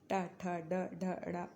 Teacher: मूर्धन्य जिसमें आपकी जुबान मुड़ जाती है